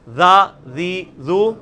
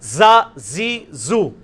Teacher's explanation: اس میں وہ سیٹی زیڈ والی آواز. اور یہ وہی مخرج ہے لیکن تھوڑا موٹا.